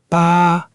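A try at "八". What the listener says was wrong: Make sure your ah sound is open and clear, almost like the ah in father.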